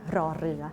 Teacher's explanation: in Thai language, you can find this kind of R that you have to vibrate your tongue